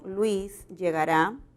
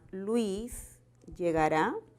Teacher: notamos que el tono final es descendente